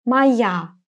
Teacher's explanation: The letter O is going to be pronounced as A because it's unstressed.